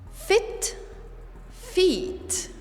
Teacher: the difference is in the length of the vowel one is short the other one is long